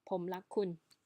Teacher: We often pronounce this R with L instead because sometimes we get a bit of a lazy tongue